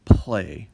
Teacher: the general north american english pronunciation of the word play where the L is voiceless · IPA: [pl̥e]